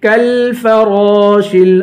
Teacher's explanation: کاف کو لام سے ملائیں گے، آواز نہیں ہلائیں گے، کالفراش، را کو پر پڑھیں گے، شین کو لام سے ملائیں گے